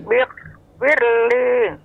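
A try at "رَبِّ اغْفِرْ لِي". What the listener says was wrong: Rabbiknya berhenti deh, Nek. Rabbik. Namun dia Rabbil, bil. Rabbil firli. Bedakan dengan Rabbih bukan, ya. Namun dia Rabbil, bil.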